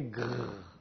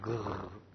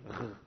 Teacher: Si je fais « ge » et que je laisse passer l'air un peu, ça fait « grrr ». Essayez de faire un « ge » et ensuite de frotter un peu fricatif. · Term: R grasseillé